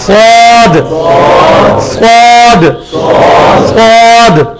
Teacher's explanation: سین والی جگہ صحیح, تھوڑی سی زبان گول کر کے سواد